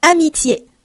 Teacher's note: 这个清辅音▁t，▁因为后面是半元音，送不送气都是可以的。那法国人呢比较习惯在这个时候送气